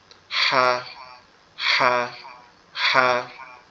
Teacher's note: এরপরে যেটা হা, এটা হচ্ছে আমাদের এই কণ্ঠনালীর মধ্যখান থেকে হবে, আওয়াজটা একটু গলা চেপে হবে